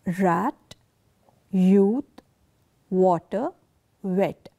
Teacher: you will notice movement of lips but the lips will not come together when these words are uttered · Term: approximates